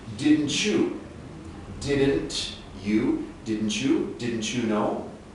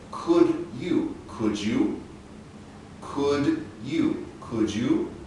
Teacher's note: When we combine a final T with an initial or starting Y, we often change the TY into a CH sound.